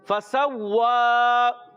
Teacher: جی ہاں پیارے بچوں فا کی ادائیگی اچھے طریقے سے ادا کریں گے. سین سیٹی کے ساتھ ادا ہوگا